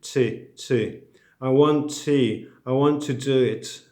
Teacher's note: In English, when you say T, the tongue doesn't touch the teeth. It touches the alveolar ridge, which is above the top teeth. This is the first part of the hard palate. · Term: English T